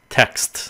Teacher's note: cái âm S nó sẽ chiếm cái âm t trong cái chữ text